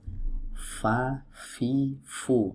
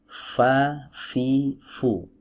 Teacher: Huruf fa ini adalah huruf yang keluar dari ujung-ujung gigi seri bertemu dengan perut bibir bawah. Ujung gigi seri.